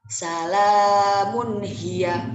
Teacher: Jadi tidak ada dengung sama sekali dalam perkataannya. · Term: izhar halki